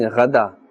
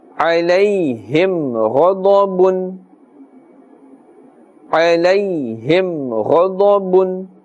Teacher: ghain and dad, these two are also part of the huruf musta'aliyah, and therefore must always be pronounced with a thick tone, a full mouth.